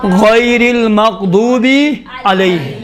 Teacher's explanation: غین موٹے حروف میں سے ہے، اس کو موٹا تلفظ کرنا ہے